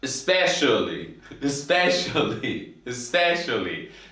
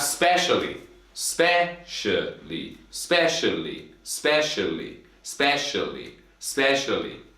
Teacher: especially 4 syllables and specially 3 syllables. But here, the first syllable is so quiet sometimes.